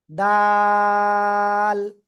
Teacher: জিহ্বার আগা সামনের উপরে দুই দাঁতের গোড়ার সাথে লাগাবেন লাগে উচ্চারণ হবে এই যে এরকম ডাল ঠিক আছে শক্ত করে উচ্চারণ করা যাবে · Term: দাল